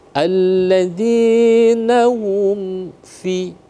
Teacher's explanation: dibaca jelas izhar syafawi jelas dengan tetap kedua bibir tertutup